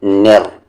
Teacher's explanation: रा को आप हेवी करेंगे क्योंकि इस पे ज़बर है